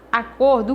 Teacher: acordo cor é a sílaba tônica